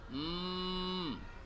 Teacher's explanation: Iqlab kalau ada nun sukun sama tanwin ada bunyi n di huruf Arab terus ketemu ba dia. Maka cara membacanya menyuarakan huruf nun atau tanwin menjadi huruf mim. Jadi m dengan merapatkan dua bibir serta mendengung.